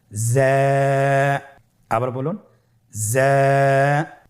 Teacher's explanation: যা হরফটির মাখরাজ আপনারা দেখতে পাচ্ছেন জিহ্বার আগা সামনের নিচের 2 দাঁতের পেট ও আগার সঙ্গে লাগিয়ে উচ্চারিত হয়।